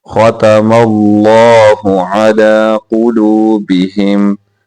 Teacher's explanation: لفظ اللہ کو موٹا کر کے پڑھیں گے